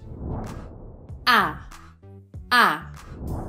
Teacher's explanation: my tongue is flat in my mouth, disengaged.